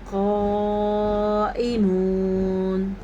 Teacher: موٹا قاف ہے اور اس کے ساتھ جو یہ مد ہے یہ 6 حرکات عربیہ کے برابر ہے، یعنی 5 حرکات عربیہ یہ ہو گیا اور ایک الف یہ ہو گیا، 6 سیکنڈ تک اس کو لمبا کرنا ہے۔